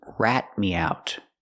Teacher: We need a stop T at the end of rat.